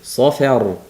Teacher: sod yug'on fa ingichka ro yug'on ikkita yug'onni orasida faning ichkarishligini yaxshilab bildirishimiz kerak